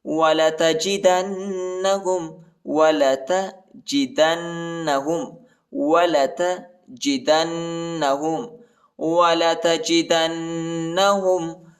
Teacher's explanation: دال کو نون کے ساتھ ملائیں گے اور غنہ بھی کریں گے